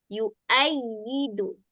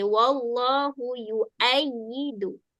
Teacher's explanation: Wau kita tak bunyi. Kita bunyi hamzah. Hamzah baris atas bunyi a. Bunyi dia yua.